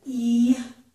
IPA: i